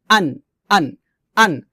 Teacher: দেখুন প্রথমটা হচ্ছে হামজা, হামজা নুন জবর আন, আন, হামজাটা আমরা হলকের শুরু থেকে সাধারণভাবে নরমাল করে উচ্চারণ করব